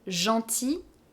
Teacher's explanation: Gentil masculine, we don't pronounce the final L.